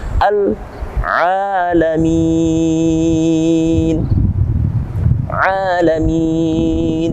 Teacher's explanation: alif lamnya kita baca karena alif lam tersebut bertemu dengan huruf ain, dia wajib dibaca dengan jelas. Beda seperti yang kita temukan dalam alif lam sebelumnya, yakni alif lam syamsiyah, maka kali ini kita temukan dalam alif lam qamariyah.